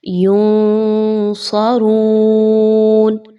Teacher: آپ نے یہاں پہ نون کی آواز کو مخفی کر کے پڑھنا ہے، جی ہاں، منہ میں چھپائیے، واضح نہیں پڑھنا اور تھوڑا سا غنہ بھی کرنا ہے۔ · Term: اخفا